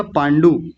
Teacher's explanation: लंबा नहीं खींचेंगे क्योंकि छोटा ऊ है